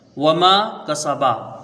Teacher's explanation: واو کو جلدی پڑھیں گے، میم کے ساتھ الف مدہ ہے، اس کو کھینچ کے پڑھیں گے